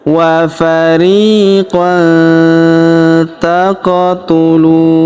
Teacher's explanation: Huruf qaf berharokat sukun, maka kita pantulkan atau kita qalqalahkan.